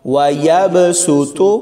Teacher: اس لفظ میں ہم نے سین پڑھنا ہے، صاد نہیں پڑھیں گے. اوپر والی چھوٹی سین کے ساتھ اس لفظ کو پڑھیں گے، یعنی وَيَبْسُطُ، واو زبر وا، یا با زبر یب، وَيَب، سین پیش سو، تو پیش تو، وَيَبْسُطُ وَاللَّهُ يَقْبِضُ وَيَبْسُطُ وَإِلَيْهِ تُرْجَعُونَ.